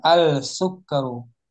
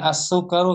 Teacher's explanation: Alif lamnya nggak dibaca, langsung dilebur ke sin. Kalau mau dipaksa dibaca alif lamnya agak sulit ini lisan.